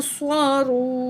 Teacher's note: इसी तरह वाओ साकिन है, इससे पहले अल्फाज पर पेश है, तो ये क्या है, वाओ मद है, एक अलिफ के बराबर खींच के पढ़ेंगे। यूं स्वारू, नून ज़बर न, यूं स्वारून।